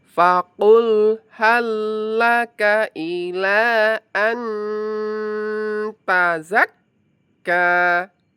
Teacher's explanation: An tazakka, ka-nya mad thabi'i diayun.